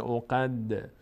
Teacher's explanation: دال هم از حروفی هست که میلرزه در مخرجش در هنگامی که ساکن است